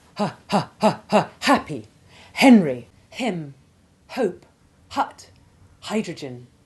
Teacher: The sound is like panting when you've been running hard. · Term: sounded H